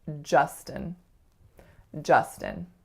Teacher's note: So sometimes I hear it as more of a ah, oftentimes actually I hear it as more of a oo, but it's really ja, like in just. And then the second syllable is schwa, n, or a syllabic n.